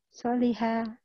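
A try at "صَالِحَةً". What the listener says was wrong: So-nya panjang.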